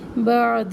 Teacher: ہی کو تھوڑا سا لمبا کرے، ہا کے نیچے کھڑی زیر ہے 1 الف کے برابر